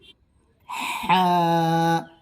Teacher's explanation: হা গলার মাঝ থেকে আদায় করবে